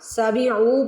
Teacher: عین کو کھینچنا ہے آپ نے، نہ سین کو کھینچنا ہے نہ میم کو، عین کو کھینچنا ہے۔